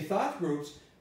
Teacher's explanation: i stress thought because there are two nouns